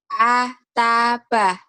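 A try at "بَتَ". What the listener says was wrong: Ataba. Atabah. Kok atabah ya? Ataba. A ta kan gak ada hanya. Ba tuh. Ciluk ba. Masa ciluk bah. Jangan ada hak aja ya. A, ba.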